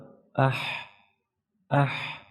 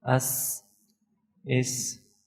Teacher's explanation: So due to the sifat hams, the sound of these letters will be weak, but the airflow or breathe will be continue.